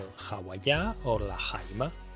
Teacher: which begin with an aspirated h, because it is a consonantal sound